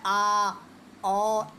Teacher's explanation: विवृत स्वर में उच्चारण में मुख द्वार पूरा खुला रहता है। विवृत यानी व्रत के आकार का हो जाता है, पूरा खुल जाता है।